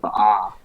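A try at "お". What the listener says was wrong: I think that's an O, not an ah.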